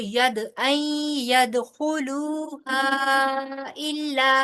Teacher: दाल के ऊपर कलकला होगा